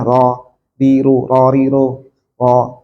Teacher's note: Ro-nya harusnya di ujung lidah ada di depan ro. Tapi kalau lidahnya dilipat ke dalam ro dari dalam, nah itu malah salah. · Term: huruf ro